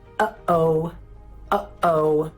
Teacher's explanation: It's your glottis opening and closing really fast. That's a glottal stop.